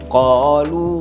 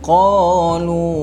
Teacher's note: Lu itu boleh jadi 4 ataupun 5 harakat.